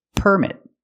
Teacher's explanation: Remember, the stress is on the first syllable.